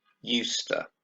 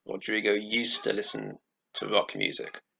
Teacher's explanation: notice that the d doesn't sound. That's because it's followed by the t sound. Okay, so we lose this d sound.